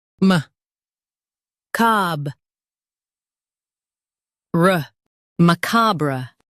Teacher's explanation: Stress cob and soften ruh.